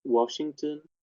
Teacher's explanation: It's rising. This is a rising tone.